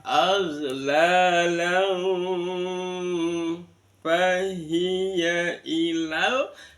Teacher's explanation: Matobi la, lam ada fathatain bertemu dengan fa, namanya bacaan ikhfa hakiki. Ikhfa itu samar-samar, jadi bunyi n-nya disamarkan dengan fa. Bukan langsung berbunyi mim ya, tapi seolah-olah berbunyi mim.